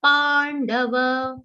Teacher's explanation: complete the long sound of pa and then give a mild aghat of na